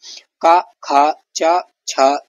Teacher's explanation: उच्चारण में स्वर रज्जु नहीं कांपती है। जो स्वर रज्जु है वो नहीं कांपती है। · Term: अघोष व्यंजन